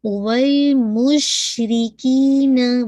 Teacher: مش چین پہ آپ کی تفشی ہے، زبان پھیلے گی، آواز پھیلے گی